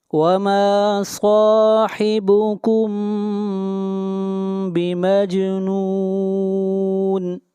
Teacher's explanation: صاحبكم میم ساکن کے بعد با ہے، یہاں پر اخفاء شفوی ہوگا